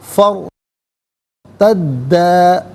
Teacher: اب ناظرین را ساکن ما قبل فا پر زبر ہے تو را ساکن کو پر کر کے پڑھا جائے گا۔ فرتدا، دال مشدد ہے، اسے جماؤ کے ساتھ پڑھیں گے